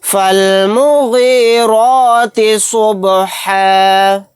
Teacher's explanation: با ساکن ہے، یہاں پر قلقلہ ہوگا